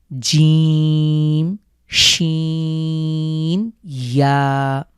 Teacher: আমরা তিনটি হরফ দেখতে পাচ্ছি জিম শিম ইয়া এটা উচ্চারণের পদ্ধতি আমাদের জীভের মধ্যখান ঠিক তার উপরের তালুর সাথে খুব স্ট্রংলি লাগিয়ে শক্ত করে উচ্চারণ করতে হবে